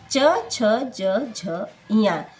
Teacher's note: जब हम इन पांचों वर्णों का उच्चारण करते हैं तो इसका उच्चारण तालु के माध्यम से होता है। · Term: च वर्ग